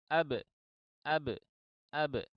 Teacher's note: bunyi yang keluar itu dari qalqalah, ya huruf qalqalah itu adalah mirip dengan bunyi e dalam bahasa Indonesia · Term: bunyi qalqalah